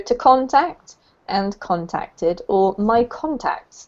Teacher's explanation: it's all the same emphasis on the first syllable